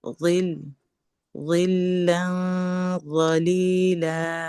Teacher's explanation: লা যেন বড় না হয়